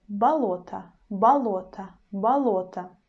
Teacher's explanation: word balota balota you see this dress is in the middle but the first o becomes a